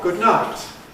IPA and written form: ˌgʊd ˈnaɪt (good night)